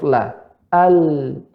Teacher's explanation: suaranya dari dalam, ya, keluar ke kanan atau kiri. Itu pada huruf la, al, kanan kiri.